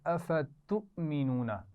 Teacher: حمزہ ساکن ہے. شاباش. جھٹکے سے پڑھا جائے گا